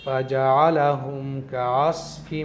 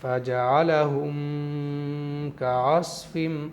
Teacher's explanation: میم پر میں رکا بھی نہیں، جلدی پڑھ دیا، غنہ بھی نہیں کیا، اور میم کو ظاہر کیا یعنی اپنے مخرج سے میں نے ادا کیا۔ · میم پر بہت دیر تک رکے رہتے ہیں، جلدی نہیں پڑھتے ہیں، اور غنہ بھی کر دیتے ہیں کچھ لوگ، اور میم کو ظاہر کر کے یعنی صاف صاف نہیں پڑھتے ہیں۔